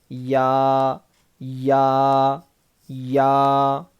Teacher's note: زبان کے بیچ کے حصے کو اوپر کے تالوں میں لگانے سے یا ادا ہوتا ہے